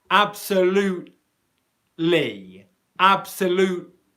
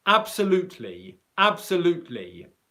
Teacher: I'm not releasing any airflow at all on the T. And specifically the reason why I'm not doing that at all here is because the L sound that comes right after the T comes from the same position in the mouth.